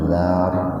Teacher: Tafhim. Tafhim itu tebal karena ada ro mati didahului fathah. Jadi roknya dibaca tebal. Zar, bukan dar.